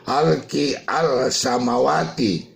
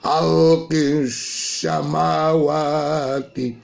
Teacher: alif lamnya itu tidak kita baca, tapi kita sembunyikan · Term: idgham samsiyah